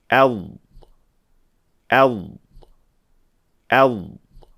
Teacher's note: یہ داد ساکن کی مشق سے حاصل ہوتا ہے، جیسے أرض أرض أرض اسے درست طریقے سے کرنے کے لیے نوٹ کریں کہ آواز اندر سے باہر کی طرف حرکت کرتی ہے، یعنی زبان کا پچھلا حصہ پہلے مخرج سے ٹکراتا ہے اور پھر بتدریج باقی حصہ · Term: استطالہ